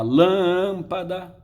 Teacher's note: a sílaba tônica não é a última, não é a penúltima, é a antepenúltima. Se for a antepenúltima, a palavra é proparoxítona e, consequentemente, vai receber acento. · nesses 5 exemplos, a sílaba tônica não é a última, não é a penúltima, é a antepenúltima.